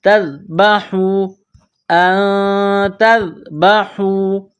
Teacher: حا یہ گلے کے درمیان سے نکلتی ہے